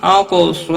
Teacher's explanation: قاف حروف مستعلیہ میں سے ہے، پر پڑا جائے گا، ساکن بھی ہے، اس پر قلقلہ بھی ہوگا